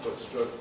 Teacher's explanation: no contrast between foot and strut, so they rhyme